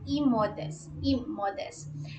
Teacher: meron kasing stress yung E na sound before the M.